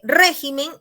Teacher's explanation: Régimen es el singular y la sílaba tónica está en re.